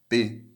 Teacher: garganta você o esforço maior está justamente nos lábios percebe p o esforço está nos lábios por isso são classificadas como as labiais